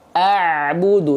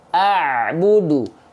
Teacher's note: Makhraj itu adalah tempat keluarnya huruf hijaiyah. Nah, ain keluar dari yang namanya wastul halqi. Wastul halqi itu artinya adalah tengah tenggorokan. Tengah tenggorokan kita dikuatkan, ditekan seperti ini.